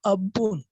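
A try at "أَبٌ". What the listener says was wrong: अबुन, अबुन बगैर बगैर तशदीद के।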